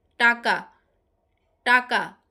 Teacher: যেসব ব্যঞ্জন ধ্বনি উচ্চারণের সময় জীভের ডগা মূর্ধার সঙ্গে লেগে বায়ুপথে বাধার সৃষ্টি করে সেগুলোকে মূর্ধন্য ব্যঞ্জন বলে।